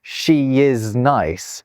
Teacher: So if I say she is nice, I've put a y after the she is, right? But there isn't a y there. That intrusive r and that intrusive y are just there to help ease the transition between sounds.